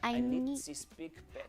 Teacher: Almost like a TS on the end, very hissy.